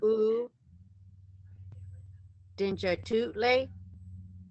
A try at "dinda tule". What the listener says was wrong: Oh yeah, so that's correct for dinja, but let's see on here the T is da. Is we change it from dinja tu le to dinda tu le?